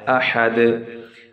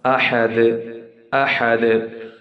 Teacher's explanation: I'm giving bit echo to it, to the da sound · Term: qalqala